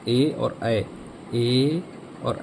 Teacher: कंठ और तालु, गले से भी आवाज़ निकलेगी और तालु पर भी जोर पड़ेगा, इन दोनों जगह पर बल लगेगा, इन दोनों जगह पर प्रेशर पड़ेगा।